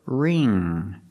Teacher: the NG makes the nasal sound there's no G sound